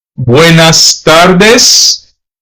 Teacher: some Hispanic countries tends to leave off the s